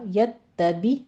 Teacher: تا کی تشدید ادا کیجیے، اوپر فتح ہے نیچے کسرہ، یتبی، یتبے نہیں کہنا